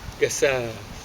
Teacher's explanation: In German, an S before a vowel is pronounced like a Z.